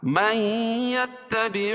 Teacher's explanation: نون ساکن کے بعد ادغام مع الغنہ کے 4 حرفوں میں سے یا ہے تو یہاں غنہ کر کے پڑھیں گے